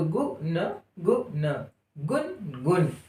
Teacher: ग में क्या सुनाई पड़ रहा है? उ। और कैसा सुनाई पड़ रहा है? कम समय लेते हुए